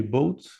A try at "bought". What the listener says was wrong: Ouais, bought. Parce que là, tu m'as dit un bateau, donc attention à la prononciation aussi. bought.